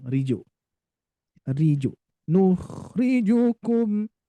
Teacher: Ri-nya masih kepanjangan Bu. Ri itu kepanjangan. Harus riju langsung.